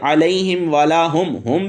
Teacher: میم ساکن کے بعد واو ہے، یہاں پہ ہو رہا ہے اظہار شفوی